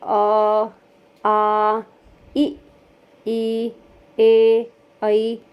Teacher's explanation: होंठों का कोई गोलाकार स्थिति नहीं है, तो ये अवृत्तमुखी हो जाते हैं।